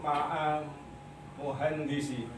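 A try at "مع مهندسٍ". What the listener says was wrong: Ma'a muhandisin. Iya, jangan lupa karena nggak ada alif lamnya. Kalau tidak ada alif lamnya maka ma'a muhandisin.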